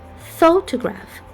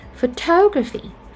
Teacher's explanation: for photograph, we have the first syllable to be stressed, but for the second word, photography, the second syllable is stressed